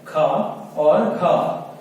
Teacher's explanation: अब बात करें महाप्राण की, तो ऐसे व्यंजन कि जिनको उच्चारित करते समय हमारी श्वास जो है अधिक मात्रा में बाहर निकलती है, या हम ये बोल सकते हैं इनको उच्चारण करते समय हम हकार या हा का स्वर उत्पादित करते हैं, तो वो हमारे महाप्राण व्यंजन कहलाते हैं।